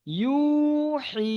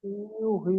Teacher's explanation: ইয়া মাদ্দাকে একালি পরিমাণ টান দিয়ে পড়তে হবে